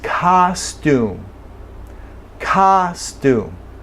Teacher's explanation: The sound is ah, and that is a normal, common, expected sound in English for the letter O. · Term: short O